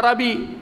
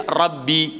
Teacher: Tapi ba yang sukun dengan ba kasrah dia idgham jadi satu. Dia buh syaddah.